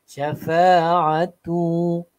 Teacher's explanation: syafa, fa akan jadi panjang